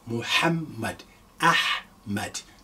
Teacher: It's a very hard H. You are expelling the air. When you say this repeatedly, you will see that dryness in your throat.